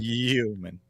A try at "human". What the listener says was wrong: Human. Human. You can't say the hard H sound.